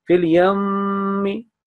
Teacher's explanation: You have to drag, you have to hold nasal sound in your, nasal sound in your nasal pipe, nose pipe. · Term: gunna sound